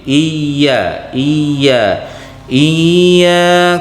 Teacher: tempat keluar hurufnya yaitu di tengah lidah disentuhkan dengan Langitan atas